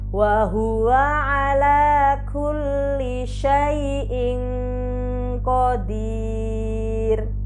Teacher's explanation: Ro dibaca sukun karena waqaf dan sebelumnya berupa ya sukun. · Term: ro dibaca tarqiq